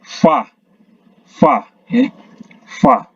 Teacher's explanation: gigi atas menyentuh bibir bawah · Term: huruf Fa